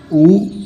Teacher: उ पश्च संवृत स्वर होता है।